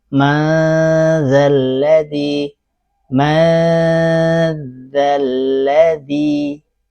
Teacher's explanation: nah ini nun sukun atau tanwinnya dibaca tipis ikhfanya karena huruf setelahnya huruf tipis